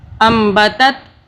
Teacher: با پہ ہم قلقلہ کر رہے ہیں، با کو ہم طاقت سے پڑھیں گے